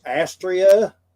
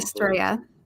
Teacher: That's actually Astrea. Yeah, accent on the second syllable